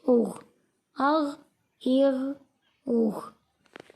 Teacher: غین حروف مستعلیہ ہے، اس کو موٹا کر کے پڑھیں گے